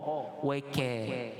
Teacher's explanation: Wa kanu dengan kaf fathah. Kaf ni nipis, di atas daripada qaf, dia bukan waqa.